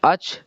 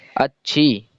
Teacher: چھا، ٹھیک ہے۔ اب چھا کے اوپر تشدید لگی ہوئی ہے، تو اس وجہ سے یہ حرف 2 مرتبہ پڑھا جائے گا، تو اچ۔ اس کے بعد میں پھر 1 مرتبہ پڑھا جائے گا، چھا اور چھوٹی والی یا، کیا ہوا؟